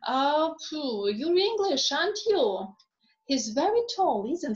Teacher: question tags showing less certainty when we really want to find out your opinion, right? Then the intonation is rising.